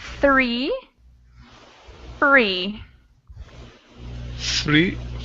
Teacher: we don't use our vocal cords and it's a very soft sound